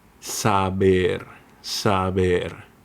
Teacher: between the vowels it sounds softer. Your lips touch lightly without the pop. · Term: soft B